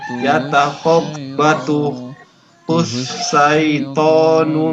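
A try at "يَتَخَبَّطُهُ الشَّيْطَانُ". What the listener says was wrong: Masih di huruf shin yang pertama. Yatakhabbatuhush. Masih kurang jelas.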